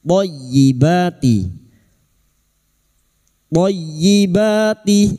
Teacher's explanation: Masuk pada huruf th minat thyibati. Dan berikutnya huruf th masuk pada huruf ya yang bertasdid hanya masuk tanpa mendengung. Thyibati thyibati ba alif di atas dua harakat mad thabi'i.